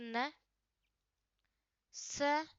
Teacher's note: ये वर्त्य ध्वनियां होती है, जो आपके जो वर्त्य ध्वनियां होती है, जो आपके दांत के जो जस्ट ऊपर वाला भाग होता है ना, वहाँ पास में जड़ों के माध्यम से बोली जाती है, वो आपको वर्त्य ध्वनियां कहलाती है।